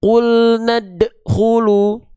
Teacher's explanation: Jadi si bunyi dal udah dipantulkan kan, tapi dia pantulannya tertahan